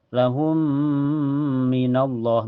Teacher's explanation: Cara bacanya mim pertama dimasukkan ke mim yang kedua dengan sempurna ya. Ini juga bisa disebut idgham kamil karena masuknya dengan sempurna. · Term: idgham mutamasilan